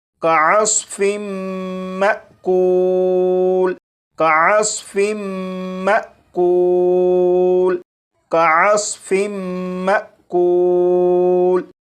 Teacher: اب ان دونوں الفاظ کو پڑھیں گے، یہاں پر میم مشدد پر غنہ بھی ہوگا، اور یہاں پر الف کے اوپر جزم ہے، یعنی یہ حمزہ ساکنہ ہے، تو حمزہ ساکنہ کو جھٹکا دے کر پڑھیں گے